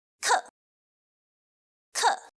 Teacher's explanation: the fourth tone travels the farthest range from very high to very low, which means it is a sudden and sharp fall